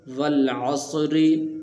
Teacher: عص والعص را زر ری والعصری۔ اب اس لفظ کے اندر را کے نیچے زیر ہے تو اس کو باریک کریں گے، اس کو پر نہیں پڑھیں گے